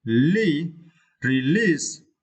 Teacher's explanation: you can see we should stress the second syllable